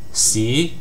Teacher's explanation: It's a rising tone like you're surprised. It's the equivalent to the second tone in Mandarin.